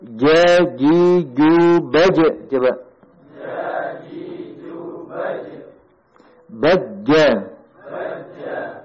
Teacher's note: huruf gaf ya kita lanjutkan huruf makhlj ketiga yaitu wasatul lisan wasatul lisan yaitu bagian tengah lidah Tengah lidah ya menyentuh langit-langit